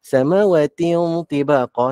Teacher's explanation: tanwin jumpa dengan ta ni dia dengung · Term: dengung ikhfa